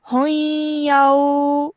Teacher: So that means that when you're joining ha and ya together, you're forming a nasal sound in between. So you're saying hoyao. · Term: idgham nakis